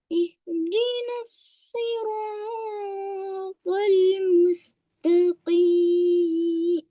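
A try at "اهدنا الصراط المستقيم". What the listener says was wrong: Bila dah buat jawab ni awak jangan terlalu kepit suara. Okey. Buka awak punya suara tu.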